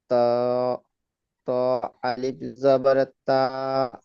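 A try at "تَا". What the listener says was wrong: তো নয় জি, তা, আলিফ জবর তা। তা টান দেন।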